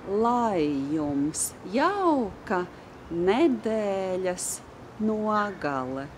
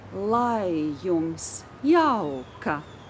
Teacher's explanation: Probably you noticed that the second word is not stressed. The word jums is not stressed.